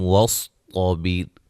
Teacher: صاد اور طا کو موٹا ادا کریں گے